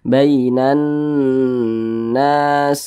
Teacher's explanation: Nah, bainan di bagian nannya tuh yang kita panjangkan. Kita tahan, kita panjangkan sejenak. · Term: gunnah musyaddadah